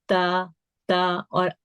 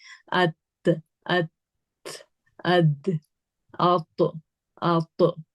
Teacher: अब इसमें आगे के दो दांतों की जड़, यानी जड़ क्या होती है, जहां से जो गम का हिस्सा आपके दांतों से ज्वाइंट हो रहा है, वो वाला पॉइंट है। उस जगह पे आपकी जबान ने टच करना है। तो जब हम वो टच करते हैं तो ता करके देखें, जबान कहाँ लग रही है आपकी, ता ता।